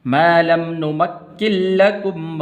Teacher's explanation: اس لفظ کو، آپ نے ایسے نہیں پڑھنا نمکن لکم نہیں، کاف کو آگے لام کے ساتھ ملانا ہے